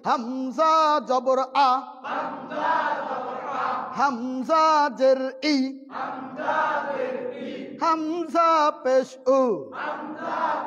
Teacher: হামজা আকর হলকের প্রথম থেকে শক্ত করে পড়তে হয়